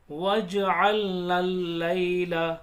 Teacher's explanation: نون کو لام میں ملائیں گے